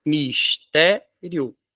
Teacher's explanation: se é penúltima a palavra mistério ela é paroxítona